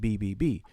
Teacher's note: the actual name of the sound is a voiced bilabial plosive